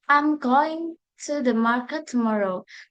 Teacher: Notice the reduction of to and tomorrow into weaker forms.